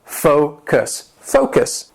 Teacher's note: The word has 2 syllables and the stress is on that first syllable.